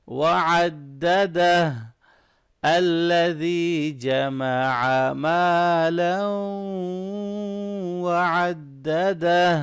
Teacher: ہا کو اچھی طرح سے گلے کے درمیان سے ادا کریں گے